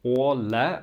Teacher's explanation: A with the ring on top is an O, just a dark O